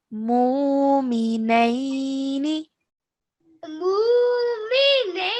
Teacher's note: we're stretching for 2 counts because it's a waw sakin, letter before carries a dhamma, so it's a waw mud